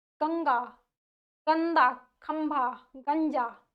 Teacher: हमने यहाँ पर क्या बात करी कि इसका जो यानी कि अनुस्वार ध्वनियों का जो उच्चारण है वो नाक से होता है, नाक से होता है, नाक से होता है, यानी कि जब हम इनका उच्चारण करते हैं तो हमें नाक में ज्यादा जोर डालनी पड़ती है